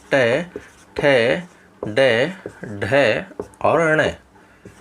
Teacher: मूर्धा इसलिए है क्योंकि इन वर्णों का उच्चारण करते समय हमारी जो जिह्वा होती है वह मूर्धा को स्पर्श करती है